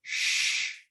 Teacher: then we have the sh sound which is the shh sound this is a voiceless sound